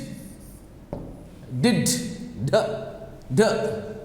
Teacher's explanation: Your tip of your tongue touches the back of your front teeth. · The tip of the tongue touches the upper palate.